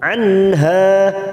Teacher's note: ini kita panjangkan dua harakat Matah khirbihibiihaha nun sukun bertemu ha Idar halq kita baca jelas tanpa mendengung · Nun sukun bertemu ha idhar halki, kita baca jelas tanpa mendengung. Anha hanya kita panjangkan 2 harokat.